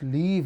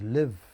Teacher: It is the length of the vowel that keeps those words apart from each other. · when you reduce the length of the vowel, when you pronounce leave as live and when you pronounce live as leave, then you cause misunderstanding